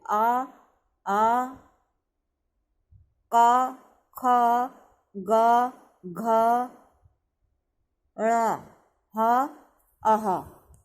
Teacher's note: सीधे कंठ से, है ना। कहीं भी हमारी जबान जो जीभ है कहीं टच नहीं होगी, सीधे अंदर से आवाज आएगी।